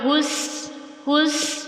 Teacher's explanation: سیٹی اوپر نیچے کے دانت قریب، زبان کی نوک اوپر کے دانتوں کے اندر کی جانب نرمی سے، جتنی نرمی زیادہ اتنی سیٹی زیادہ واضح ہوگی۔